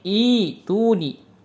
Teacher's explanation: Kalau kita ibtida menjadi ituni. Jadi hamzahnya diganti menjadi huruf ya.